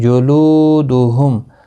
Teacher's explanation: جت، تا ساکن کو ہلانا نہیں۔ جلودہم، لو واو مدہ ہے، ایک الف کی مقدار کے برابر کھینچ کر پڑھیں گے۔